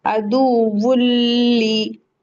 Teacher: यहाँ पे जम्मा वाली तनवीन के बाद लाम आया है, तो इदगाम बिला गुन्ना होगा।